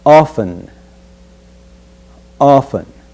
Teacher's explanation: we will omit the sound of T and pronounce the word as often